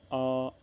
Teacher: आ के उच्चारण से क्या होता है दोस्तों, हमारे मुख का पूरा भाग खुल जाता है। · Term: विवृत स्वर